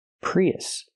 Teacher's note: We have the E sound like green beans, plus the short U sound like cup and up. When we link these two vowels, we hear yeah, in the middle.